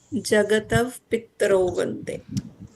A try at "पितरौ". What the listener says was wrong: यहाँ ये त है, पित्त नहीं है ना? So it is not पितरौ, पी त रौ. ये आ की मात्रा है यहाँ. The ta is not merging itself with ra. There are situations where it happens. For example, trahi. Ta and ra mix together. But pitarau, it's not pitrau.